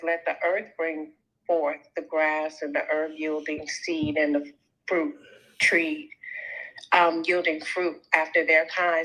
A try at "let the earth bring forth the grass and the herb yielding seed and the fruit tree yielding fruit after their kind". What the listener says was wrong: read it right. Read it right. You read it too fast. Look, Elohim said, let the earth bring forth grass. Pause. Pause.